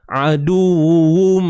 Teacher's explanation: Bunyi tanwin tu masuk dalam mim. Maka sebab tu kita dengar aduwum. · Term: idgham bi gunnah